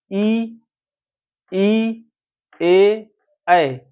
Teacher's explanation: जिह्वा का आगे वाला भाग जहां उठता है, आगे ऊपर दांत के ऊपर या तालू में जाके टच होता है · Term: अग्र भाग